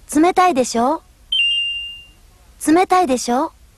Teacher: the intonation went up at the end didn't it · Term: rising intonation